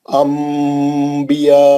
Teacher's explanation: ये हम देखिए नून रहता है लेकिन हम मीम पढ़ते हैं अंबिया को। अंबिया के वर्ड में नून रहता है लेकिन हम मीम पढ़ते उसको अंबिया क्योंकि नून के बाद बा है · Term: इखलाब